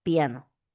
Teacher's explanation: Semi consonante, porque aparece antes de la vocal. Semi consonante.